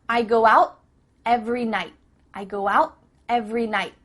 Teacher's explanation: tongue is at the top of your mouth you're about to make the T sound but no air goes through so it's just stopped at the top of your mouth